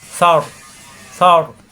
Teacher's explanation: র উচ্চারণ জিব্বার আগার ফিট উপরে তালুতে লাগবে, সর। সা নরম কিন্তু র মোটা, সর।